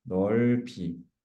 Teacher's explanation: 모음으로 시작되는 조사, 어미, 전미사, 전미사의 경우 앞말의 받침이 뒤로 넘어간다, 연음된다